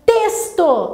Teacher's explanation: A sílaba tônica é o tês.